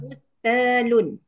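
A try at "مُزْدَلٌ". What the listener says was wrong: Musdalun. Sebab itu isdala bukan istala. Taknya menjadi dal. ta dihadapi oleh zai.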